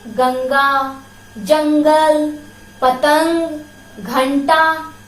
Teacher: अंग का उच्चारण नाक से किया जाता है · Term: अनुस्वार